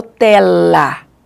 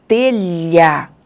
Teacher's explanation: Ele não vai tocar mais lá o alvéolo. O L, alvéolo. O lh, a língua vai mais lá